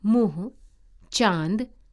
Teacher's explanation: इसका उच्चारण नाक और गले दोनों से होता है। इसे अनुनासिक या चंद्र बिंदु कहते हैं।